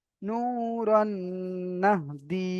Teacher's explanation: এখানে ইজরা হবে কি, রয়ের উপরে দু জাবার তানবিন, তানবিনের পরে নুন এসেছে, তাই তানবিনকে নুনের সাথে মিলিয়ে একালি পরিমাণ গুণনা করে পড়তে হবে।